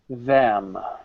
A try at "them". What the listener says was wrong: Not dem. Remember the mechanics. Teeth together like we're smiling. Put our tongue in between.